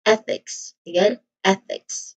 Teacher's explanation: So that's the voiceless th sound. So here the primary stress is on the first syllable eh.